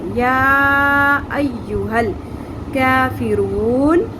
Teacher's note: مد منفصل چھوٹی مد ہے، 3 الف کے برابر ہم لمبا کریں گے، کیونکہ حرف مدہ کے بعد آگے نیکسٹ لفظ کے اندر حمزہ آ گیا ہے، ٹھیک ہے۔